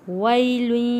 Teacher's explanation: یا ساکن سے پہلے زبر ہے، حروف مدہ ہے، حروف لین ہے، اس کو ہم نے جلدی اور نرمی کے ساتھ پڑھنا ہے۔